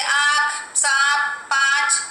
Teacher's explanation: इसे चंद्र बिंदु भी कहा जाता है। इस ध्वनि का उच्चारण मुख और नाक की सहायता से होता है, जैसे आँख, सांप, पाँच आदि। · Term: अनुनासिक